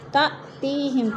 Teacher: تا میں حمزہ ساکنہ کو جھٹکا دے کر پڑھیں گے۔ تی میں یا مدہ۔